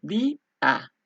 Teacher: Por ejemplo, di, a, son dos, porque la vocal tónica va a ser la i, así que se divide y son dos sílabas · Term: hiato